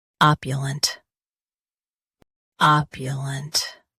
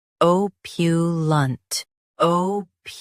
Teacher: US starts with uh uh. UK starts with o.